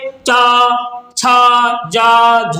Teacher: तेज आवाज में स्पर्श करते हुए संघर्ष के साथ बोलते जाते हैं। ठीक, इसीलिए इनको हम क्या बोलते हैं, स्पर्शी संघर्ष व्यंजन बोलते हैं।